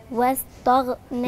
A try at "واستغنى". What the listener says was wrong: لا مش طاء، التاء رقيقة وبفتح بقي فيها تا تا تا